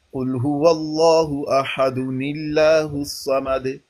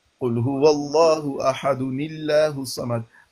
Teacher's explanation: ملا کے پڑھے تو نلا پڑھتے ہیں